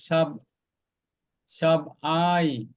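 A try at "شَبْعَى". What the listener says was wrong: শাবআই, ইয়ার আর উচ্চারণ নাই, শুধু শাবআ। ইয়াটা কোনো উচ্চারণ নেই, এটা আলিফ, হ্যাঁ আলিফ মাকসুরা, তাহলে উচ্চারণটা কি? শাবআ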